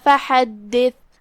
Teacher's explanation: کلمت فحدث میں یہاں حرف الحا ہے، ہم اسے حلق کے درمیان والی حصے سے پڑھیں گے، اور جو کہ دال پہ تشدید ہے لہذا 2 حرف کے مقدار میں دال کی ادائیگی کرنا ہے۔ آخری میں ثا ہے، ہم ثا کو زبان کے سر اور اوپر والے دانتوں کے اندرونی کناروں سے ادا کریں گے، اور جو کہ یہاں آیت ختم ہوئی ہم اس پہ رکیں گے تو ہم ثا پہ جزم سے رکیں گے۔